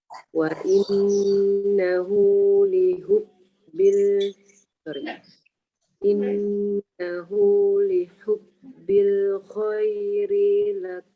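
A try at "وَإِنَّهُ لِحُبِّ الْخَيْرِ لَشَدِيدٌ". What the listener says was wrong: Khairnya pendek.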